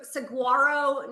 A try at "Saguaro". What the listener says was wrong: Saguaro. The G is silent.